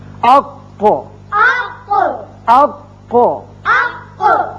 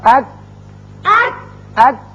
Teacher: کاف، یہ جو دونوں حروف ہیں زبان کا آخری حصہ کوے کے جو قریب ہے، جب اوپر تالو سے لگتا ہے تو ادا ہوتے ہیں۔ قاف پر کر کے پڑھتے ہیں، کاف ذرا ہٹ کر نیچے کی طرف سے نکلتا ہے اور باریک ہوتا ہے